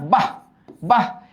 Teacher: এই বিসর্গ যখন সিঙ্গেল থাকে বা একদম শেষে থাকে তখন হ বদ্ধের মতো হয়